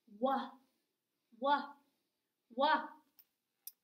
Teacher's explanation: we don't hear the H in WH because the W is the star and the H is just the person backstage helping out the W.